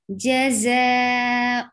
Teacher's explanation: There is whistle sound in za.